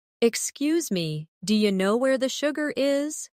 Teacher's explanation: Notice how do you changes to dia.